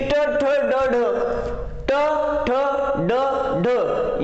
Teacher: त्यानंतर मूर्धन्य जी राहिली ती ट ठ ड ढ, ट ठ ड ढ या वर्णांचा उच्चार करत असताना आपलं जीभ पाठीमाग कठोर तालू आणि कोमल तालू या दोन्हींच्या मध्ये टेकली जाते